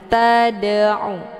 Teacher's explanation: huruf dalnya dipantulkan dengan pantulan ringan. Tad'u, keluar bunyi de sekedar saja. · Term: qalqalah sughra